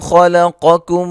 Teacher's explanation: یا مدہ ہے، خا قاف موٹا لام باریک